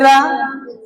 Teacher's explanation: रा जब बोलेंगे तो आपकी जो जीभ है राउंड करेगी, लुंठित टाइप का हो जाएगा रा, है ना। इसलिए इसे लुंठित या प्रकंपित व्यंजन बोलते हैं। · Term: लुंठित व्यंजन